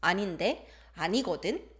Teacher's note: When you raise the intonation at the end for 은대는데 and 거든, it becomes confrontational teasing or playful depending on the context. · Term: rising intonation